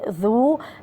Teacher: الذال كما قلت من قبل حرف من الحروف اللثوية